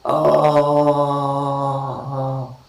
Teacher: Fifth cardinal vowel is uttered with the back of the tongue, okay, open position, unrounded, and we say ah.